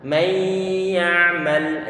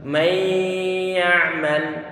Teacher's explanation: Sehingga bisa membaca idgham bi gunnah, huruf nunnya enggak akan terdengar suara. Tetapi untuk gunnahnya yang berupa dengungan di hidung itu masih ada. · Nun sukun bertemu dengan huruf ya. Nah, ini berarti idgham bi gunnah, idgham yang disertai dengan dengungan. Idgham yang bi gunnah ini disebut idgham naqis.